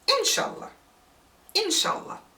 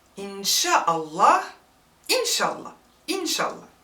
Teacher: we get rid of the glottal stop hamza